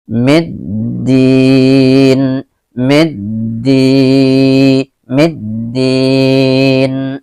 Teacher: Dikatakan alif lam syamsiah karena di depannya ada huruf dal yang merupakan salah satu huruf syamsiah. Jadi cara bacanya meleburkan alif lam syamsiah ke dalam huruf syamsiah yang di depannya. Dan jadi alif lam ini seolah-olah tidak dibaca, ya.